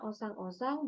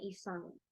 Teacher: secara fonologis ditunjukkan adanya perubahan fonem berupa huruf pertama, vokal dari O menjadi I